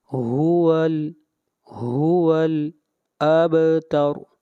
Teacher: با کے اوپر آواز کو ہلائیں گے اور را کو موٹا پڑھیں گے، اس لیے کہ را سے پہلے فتح آ رہی ہے. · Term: قلقلہ